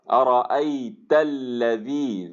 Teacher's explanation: ارأیت، یا کے اوپر سکون ہے، اس سے پہلے فتحہ ہے، لین آ گئی، تا کے اوپر فتحہ آ گیا، ارأیت، اور اس تا کا فتحہ جو ہے وہ لام کے اندر لام کی تشدید میں مل جائے گا